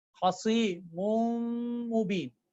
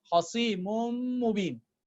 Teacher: Mim with the dhamma. Instead of the last noon, I'm pronouncing mim. I'm merging the noon into mim.